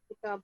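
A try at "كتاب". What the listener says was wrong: نہیں، تنوین نہیں پڑھنی. کتاب.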